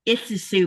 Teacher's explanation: What really teases me a lot here is the you're welcome, which is Isusu, because it has two sets of double L's, which when I hear people say it, it sounds like a sh sound, but it's not that sh like an S sound. It's actually where they're pushing the sound out the sides of their cheek while their tongue is at the top of the roof of their mouth.